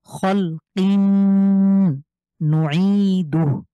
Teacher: এখন তানভিনের পরে নুন দেখতে পাচ্ছি, তাহলে আমরা এখানে মিলিয়ে গুন্না করব,